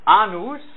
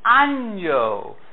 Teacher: For some reason the two N's become kind of palatalized, softened. It becomes año.